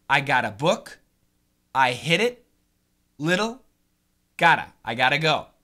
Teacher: the flap T sounds like a D